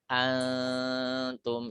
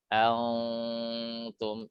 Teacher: Maka dia dibaca tidak menebal, tapi dibaca dengungnya tipis. Antum tidak dibaca antum, tidak boleh ditebalkan.